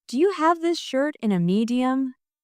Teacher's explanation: The stress is on have, shirt, and medium. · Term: rhythm